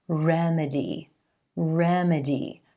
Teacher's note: This word, remedy, remedy, stressing the first syllable and the E as in red vowel sound